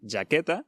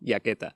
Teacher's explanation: La j siempre suena [ʒ], y no [j]